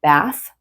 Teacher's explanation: your tongue is between your teeth. So there's the voiceless TH, like in bath.